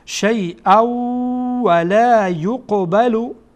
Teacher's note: میگیم شیئا، مستقیما همزه با واو وصل میشه